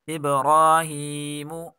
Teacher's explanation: ابراہیم، اب با میں قلقلہ کریں گے، را کھڑی حرکات ہے، اس کو ایک الف کے برابر کھینچ کر پڑھیں گے، اور یہاں ہا کے نیچے کھڑی زیر، اس کو بھی ایک الف کے برابر کھینچ کر پڑھیں گے۔ میم کے اوپر پیش ہے اور پیش کو کھینچ کر نہیں پڑھا جاتا